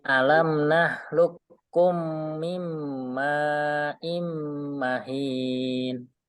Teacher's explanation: Ulangi lagi dengungnya ya, situ ada mim tasdid, tanwin ketemu mim atau nun sukun ketemu mim, itu dengung. Dengung harus panjang.